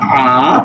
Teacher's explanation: তখন আমাদের ঠোঁট দুইটা অনেক দূরে চলে যায় এজন্য এটাকে আমরা বলি বিবৃত